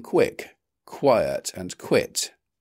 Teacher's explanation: At the beginning of words, 'qu' is typically pronounced /kw/ as in 'quick', 'quiet' and 'quit'.